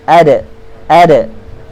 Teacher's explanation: Huruf dal. Ujung lidah jumpa dengan gusi. Gusi gigi kacit. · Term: qalqalah